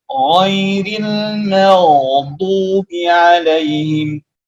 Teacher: huruf ghain dan huruf kha harus dipastikan keluarnya dari atas tenggorokan atau tenggorokan atas, atau yang disebut dengan adna al-halqa.